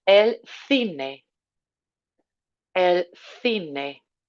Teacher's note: Nice th sound on that first C.